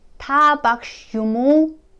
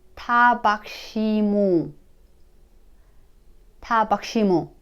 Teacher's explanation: In a spoken language, the U sound is kind of dropped.